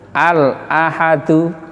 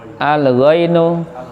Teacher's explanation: Kalau ketemu hamzah, alnya tetap ini, lamnya nggak boleh hilang. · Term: idhar komari